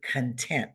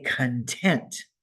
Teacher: when we say content we see that I emphasize that first syllable